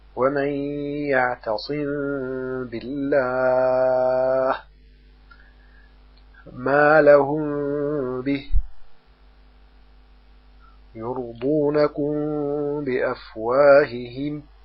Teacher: ويكون الإخفاء بغنة، ويسمى إخفاء شفويا لأنه يخرج من بين الشفتين